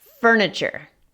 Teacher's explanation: Esa T suena más cerca a una CH